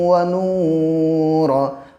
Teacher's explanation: وقف کی حالت میں را کے اوپر جو 2 پیش ہیں وہ گر جائیں گے